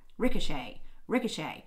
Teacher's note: ricochet does have a more pronounced secondary stress ricochet ricochet rick is the primary stress and shea is the · Rick is the primary stress and shay is the secondary stress.